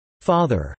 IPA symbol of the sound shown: a